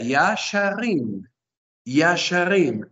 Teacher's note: el acento obviamente lo colocamos en la última sílaba. La última sílaba es la tónica.